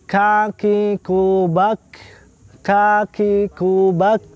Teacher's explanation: Suara tertahan akan tetapi nafas berhembus. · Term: huruf kaf